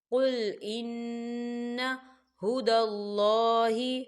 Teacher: نون مشدد ہے تو یہاں غنہ ہوگا